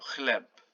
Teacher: The CH in Polish is not ch, it's h, the same as H.